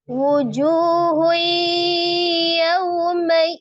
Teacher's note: Kemudian ada huruf ta marbutah berharakat dah tanwin ketika diwakafkan menjadi sukun. T marbutah yang disukunkan menjadi bunyi huruf ha